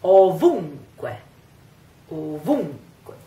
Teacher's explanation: And the stress is on the U.